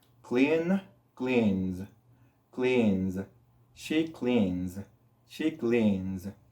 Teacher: lo único que vamos a hacer es agregar el sonido de la S. Y natural, solito, naturalmente, va a producir un sonido de Z.